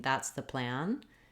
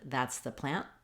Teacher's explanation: when I'm saying plan, my N can last because it's the final sound of the word